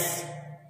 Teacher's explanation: एक्स ऐसे start होता है बीच में हल्का सा क आता है फिर स पे खत्म होता है